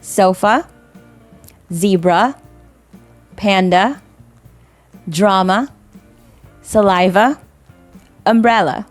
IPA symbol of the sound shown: ə